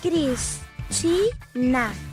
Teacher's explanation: som mais forte é a ti, mesmo que não tenha acento escrito, e é a penúltima sílaba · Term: sílaba tônica